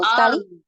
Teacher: Jadi harus ada sekali gitu getarannya ya takrirnya.